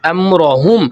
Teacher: امرہم را کو بھی ہم موٹا کریں گے